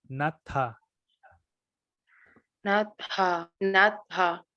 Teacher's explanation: Un breve como espacio entre la T y la A. Tiene que sonar la H muy suave.